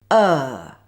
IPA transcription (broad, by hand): ɜː